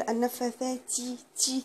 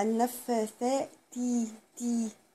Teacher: وبلاش اطلع هوا في التاء، يعني بلاش اقول النفاثاتي تي كده، لا النفاثاتي تي.